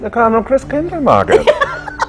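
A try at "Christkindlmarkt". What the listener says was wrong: The proper pronunciation is Chris Kindle Markt. Oh, yes, so there's no market, it's Markt.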